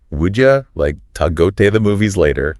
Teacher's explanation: I'm noticing would you becomes would ya, to is like ta, and the like disappears before movies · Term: linking